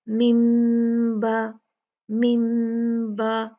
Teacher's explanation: نون ساکن کو ہم میم میں بدل کر پڑھتے ہیں. 2 کاؤنٹ غنہ ہوتا ہے